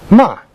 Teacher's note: The fourth tone is falling from degree 5 to 1.